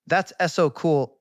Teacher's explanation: the word so gets loud and long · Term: stress